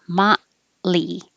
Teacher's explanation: The O sounds like ah, like hot. And don't release the T. Hold the tongue in the T position until you make the L.